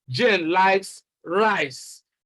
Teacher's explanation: if the stress is on rice, then the meaning we want to convey is that it is rice that Jane likes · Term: contrastive stress